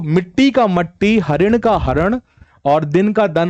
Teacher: हमने इ को आ में परिवर्तित कर दिया